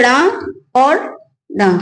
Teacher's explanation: जीभ पहले उठकर मूर्धा को स्पर्श करती है और उसके बाद फिर झटके से नीचे गिरती है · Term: उच्छिष्ट व्यंजन